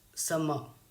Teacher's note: The example of trochee is summer. Now the first syllable is long as well as it is also a content word, so first syllable is stressed.